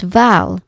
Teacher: It is not totally short because the vowel sound is held a little bit longer. It's val, not val.